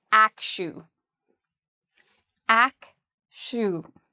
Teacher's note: The second part, even though it's spelled with a TU, is pronounced like an SHU. So we would say akshu.